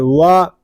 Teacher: واو دونوں ہونٹوں کی گلائی سے ادا ہوتا ہے. جب ہم واو کو ادا کریں گے تو دونوں ہونٹوں کو گول کر کے ادا کریں گے